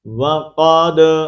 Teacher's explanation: کلکلہ کا مطلب ہوتا ہے ہلانا، آواز کو ہلا کر پڑھنا۔ اب دال کے اوپر ہم آواز کو ہلا کر پڑھیں گے